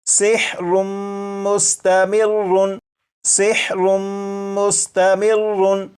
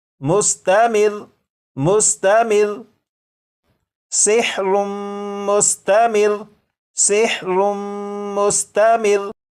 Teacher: लेकिन जब वक्फ में पढ़ेंगे तो ये जो लफ्ज़ है इस लफ्ज़ के रा के ऊपर जो तशदीद है इसे तो पढ़ेंगे, लेकिन रा के ऊपर जो 2 पेश हैं इन्हें ख़त्म कर देंगे। और ये जो लफ्ज़ है मुस्तमिर्रुन, वक्फ में ये पढ़ा जाएगा मुस्तमिर मुस्तमिर सिहरुम मुस्तमिर सिहरुम मुस्तमिर।